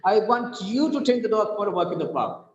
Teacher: The stress is on you here. Now here we are stressing on the person who is listening to me.